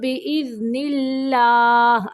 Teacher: اللہ کا لام باریک پڑھیں گے